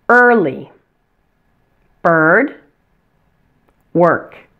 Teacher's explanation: your tongue does not touch any part of your mouth or your teeth it just floats freely in the middle of your mouth and the ER is a tense sound so make sure to